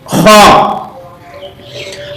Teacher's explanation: اس کی آواز جو خا ہے تھوڑی سی کھردری بھی ہوگی اور موٹی بھی ہوگی